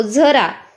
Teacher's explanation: झराचा उच्चार करताना झ्याच्या शेवटी अ असा आपण उच्चार करतो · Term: दंत तालव्य